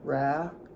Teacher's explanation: Your tongue tip was back by your throat.